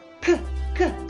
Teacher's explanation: on your tongue and try to move into the back but the back part of your tongue is going to be up and it's going to try to touch the soft palate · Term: velar consonants